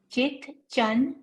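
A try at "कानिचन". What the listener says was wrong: Atra chana kanichana chana halanta nasti. So kani plus chit or kani plus chana. So kani.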